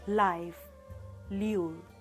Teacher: the air escaping along the sides of the tongue. La is produced with the tip of tongue, making a firm contact against the tit ridge. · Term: alveolar lateral